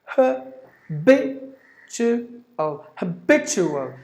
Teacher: So b should be given more volume, or b is heard little longer than the remaining syllable. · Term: stress